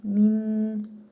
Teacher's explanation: nun hərfini burnumuzda tələffüz edərək bir hərf miqdarı uzadırıq